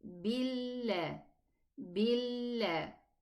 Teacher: Make sure the lam in the name of Allah has no ghunna. It's just a lam shadda.